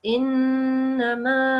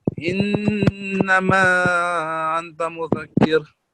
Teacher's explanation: This noon with the shadda, this will be prolonged for 2 seconds.